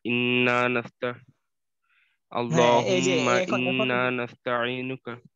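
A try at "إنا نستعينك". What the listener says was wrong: হ্যাঁ, এই যে ইন্না নাস্তাঈনুকা আর একটু গুণা করতে হবে, এখনো ওরকম ভাবে ধরা হয় না, আরেকটু ধরবেন।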